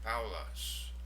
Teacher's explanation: There we have a diphthong. Alpha, upsilon, ow sound to it